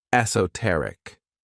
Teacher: the stress is on that third syllable